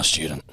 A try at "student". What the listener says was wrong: Oh, student. Put a T on the end of it. You said student. Like as if I was some type of stew. type of like casserole.